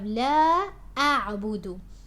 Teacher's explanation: make sure your hamza on alif is pronounced. You're not mixing it with the ain